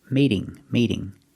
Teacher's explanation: now the T is between two vowels, so it's a fast D.